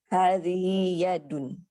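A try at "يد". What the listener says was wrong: Yadun, jangan pakai tasydid.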